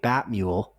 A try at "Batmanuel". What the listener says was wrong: You said Batmule. I heard Batmule.